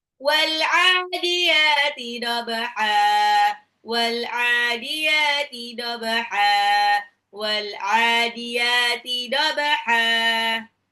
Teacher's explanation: Wal'adiyati itu ada alif lam koma ria, ain sama ya-nya 2 harokat matobai dobaha, ba-nya qalqalah, huruf ba sukun dipantulkan, ha-nya itu dibaca ha bukan han karena dia mad iwad. Menghilangkan tanwin diganti dengan fathah pada lafal dhabha.